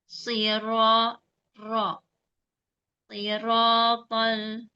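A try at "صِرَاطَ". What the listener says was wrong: Yang kurang tebal huruf satunya, bukan huruf ranya. Sirata.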